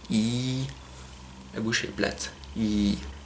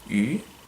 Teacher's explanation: C'est la différence entre le I et le U. Le I est prononcé tout à l'avant de la bouche, avec la langue qui touche presque le palais. Mais la bouche est plate